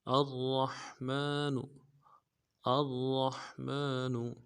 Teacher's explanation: الرحمن میں حمزہ کو را کے ساتھ ملانا ہے، را کو موٹا پڑھیں گے، را کے اوپر تشدید ہے، زور دیں گے۔ را کو حا کے ساتھ ملانا ہے، حا کو گہرائی سے ادا کریں گے۔ میم کے اوپر کھڑا زبر ہے، ایک الف دال میں کھینچیں گے، نون کو نرم سے ادا کریں گے۔